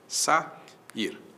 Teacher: O A para um lado, o I para o outro, duas vogais que vêm em sequência, isso é hiato.